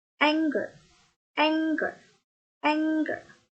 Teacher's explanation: Noun ini penekanannya pada first syllable.